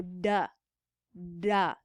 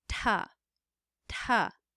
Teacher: you can feel that duh is a little bit farther back in the alveolar ridge